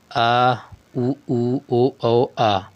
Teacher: भाषा विज्ञान की दृष्टि से उ तथा उ पश्च स्वर संवृत्त हैं, संवृत्त स्वर हैं। जिन स्वरों के उच्चारण में जीभ का पश्च भाग कार्य करता है पश्च स्वर कहा जाता है। आ उ ओ औ आ। संवृत्त स्वरों उन स्वरों को कहा जाता है जिन स्वरों के उच्चारण में मुख द्वार लगभग बंद होता है।